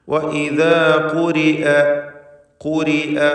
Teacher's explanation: فما لهم لا يؤمنون وإذا قرئ ഖാഫിന് തഫ്ഖീം വരുന്നു. റാ കസ്റായതുകൊണ്ട് തർക്കീഖ് ചെയ്യാൻ നേർപ്പിച്ച് റാവിനെ ഉച്ചരിക്കുക.